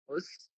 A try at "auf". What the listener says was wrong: ഔഫ് വീഡർ സേൻ. ഔഫ്. ഔസ് അല്ല, ഔഫ്. ഔഫ് ഔഫ് വീഡർ സേൻ.